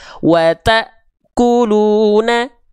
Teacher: Huruf-huruf yang berjumpa dengan hamzah sukun itu akan terhenti terhentak. · Kenapa taknya terhentak? Karena berjumpa dengan hamzah sukun.